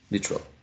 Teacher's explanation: I would go for an elision of the middle vowel sound, which is short.